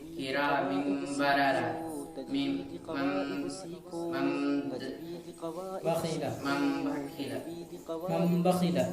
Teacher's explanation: تنوین اور نون ساکن کے بعد با ہے تو اس تنوین اور نون ساکن کو میم سے بدل کر گنہ کے ساتھ پڑھیں گے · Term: اقلاب